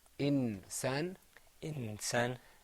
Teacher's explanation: the noon is hiding a little bit if you put your tongue on the top of your mouth